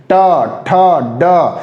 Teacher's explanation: जीभ को हम अंदर लेके मोड़ के फिर बाहर की तरफ निकालते हैं, तो ये निकालते हैं, इसलिए इसको मूर्धा में रखते हैं।